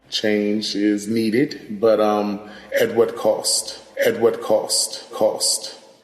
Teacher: Another feature that we see in DC, similar to New York, is the raised thought cloth vowel, that ah.